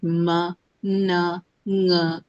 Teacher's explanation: a bit of an air also is released through your nose giving it a nasal quality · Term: Nasal sounds